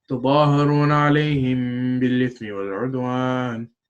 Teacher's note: when the letter ba appears after a meem sukun, it will be pronounced with a light sound in the nose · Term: Ikhfa min sakin